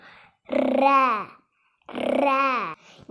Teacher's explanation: இந்த ர சொல்லும்போது உங்களோட நாக்கு மேல் அண்ணத்தோட நடு பகுதியை தொடணும். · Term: வல்லின ரகரம்